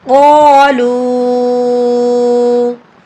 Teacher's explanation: और यहाँ पर वाव साकिन से पहले लाम के ऊपर पेश है, इसलिए ये वाव मद्दा है और इसके ऊपर मद भी है, तो इसको हम लंबा करके पढ़ेंगे